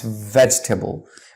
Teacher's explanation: that's not how it's pronounced it's pronounced as vegetable you see the e is silent in between so it's veg table just drop the e of course not from the writing when